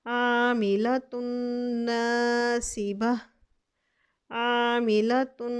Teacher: ये ता पे 2 पेश आ रहे, तनवीन आ रही, इसको हम नून के साथ गुन्ने के साथ अदगाम करेंगे